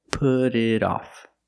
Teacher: Both T's sound like fast D's because they're between vowels.